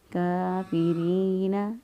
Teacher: کاف کھڑی زبر کا ایک الف کے برابر لمبا کریں گے ، کافرین، را کے نیچے زیر ہے اور بریک پڑھیں گے،